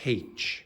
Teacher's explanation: in Ireland we pronounce it with a consonant sound at the start. So no Irish person says H, they say H, or most Irish people do anyways.